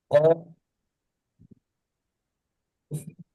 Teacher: এই কফটা 3 আলিফ পরিমাণ টানতে হবে। কফ, একটু বেশি হোক, কম না হয়।